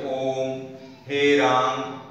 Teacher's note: जब इसको पुकारा जाता है तो अंतिम स्वर को खींचकर लंबा कर दिया जाता है